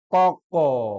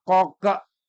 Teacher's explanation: Qalqalah bukan diakhiri dengan hamzah. Tapi bacaan separuh dari harokat.